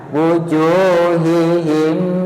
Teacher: Ta'rifu fi wujuhihim lentur tapi boten didengungaken, boten ditahan.